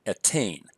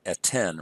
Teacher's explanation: Now that this syllable, tain, has lost its accent, it's now a closed unaccented syllable, so the vowel becomes short. And so we go from a long E, tsere, to a short E, segol.